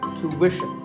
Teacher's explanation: it's not ishin, it's wishin, tuition. You have to put the w sound there